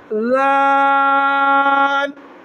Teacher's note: زال، دونوں دانتوں کے درمیان زبان تھوڑا سا آگے نکال